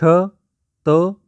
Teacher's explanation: त जो है जिह्वा जा करके दंत में टकराती है, दांत में टकराती है, तब इसका उच्चारण होता है, इसलिए त दंत ध्वनि है।